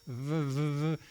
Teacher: a V sound, your lower lip goes against your teeth